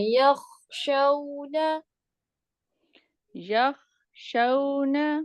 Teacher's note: اچھا، یہاں پہ دیکھیں ہم جھٹکا نہیں دیں گے، یخ ایسے نہیں کریں گے، یخ، یخ. ٹھیک ہے، خا کا مخرج پیچھے کی طرف ہے، حلق کے سائڈ میں، آپ نے وہاں سے خا کو ادا کرنا ہے